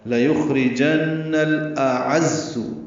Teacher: حمزہ اقصی حلق سے، عین وسط حلق سے ادا ہوگا. لیخرجن الاعز، اعز پڑھنا ہے، عین وسط حلق سے ادا کرتے ہوئے زا سے ملائیں گے، زا تیز صفیر کی آواز سے ادا ہوگا.